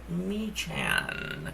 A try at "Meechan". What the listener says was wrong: Yeah, I am, and it's actually Meekin. The H is silent.